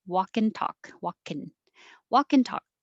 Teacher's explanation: So instead of walk and talk, make the and shorter.